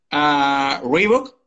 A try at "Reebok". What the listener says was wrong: No, eso es pronunciada a la española. En inglés decimos... Reebok.